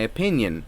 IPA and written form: əˈpɪnjən (opinion)